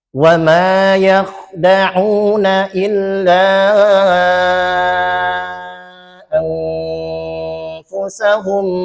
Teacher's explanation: Dan nun sukun ketemu fa dihukumi ikhfa hakiki.